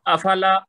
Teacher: لام زبر کے بعد الف مد ہے تو تھوڑا اس کا لمبا کریں گے 2 حرکت تک